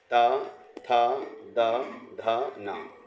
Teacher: आगे आ रहा है आपका यह है ना त वर्ग में इनको हम कह सकते हैं दंत वर्ण त थ द ध न इनका उपयोग हम जो है बोलने में दांत से स्पर्श वाले व्यंजन है ये